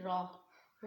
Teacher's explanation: रॉ जो है ज़ुबान के पुष्ट वाला किनारा ऊपर के दांतों के मसूड़ों से मस करेगी तो हमारा रॉ अदा होगा। कैसे, यानी कि ज़ुबान की पुष्ट, ये देखिए ये ज़ुबान की पुष्ट है, फॉर एग्जांपल ये देखिए ये ज़ुबान की सारी पुष्ट है, जब ये ऊपर के मसूड़ों पे लगेगी, ऊपर के दांतों के मसूड़ों से मस होगा तो हमारा रॉ अदा होगा।